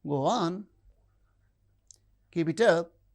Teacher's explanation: The lower rise in statements is encouraging.